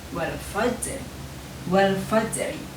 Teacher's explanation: ada pantulan dalam huruf ja yang berharokat sukun